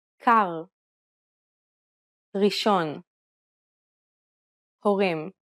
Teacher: the Hebrew R is pronounced using the back of the tongue with a slight roll. You can think of it like gargling air at the back of your throat.